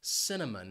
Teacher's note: This spice has three syllables, and the stress is on that first syllable, cinnamon. Notice that C is going to have an S sound, and it's followed by the schwa, cinnamon.